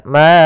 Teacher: Kemudian a'bud, ada bacaan mad jaiz munfasil, yaitu suara ma-nya dipanjangkan sepanjang 4 harokat